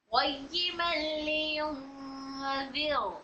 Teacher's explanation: वलम यजअल लहू इवजा क़य्यिमन लियुनज़िर, क़य्यिमन लियुनज़िर, पहले वाले में मेरा रॉ मोटा हो गया था, मोटा नहीं बारीक होना, क्योंकि इसको साकिन कर रहे हैं तो यहाँ पर रॉ को बारीक पढ़ने का कायदा नंबर 2 हो रहा है।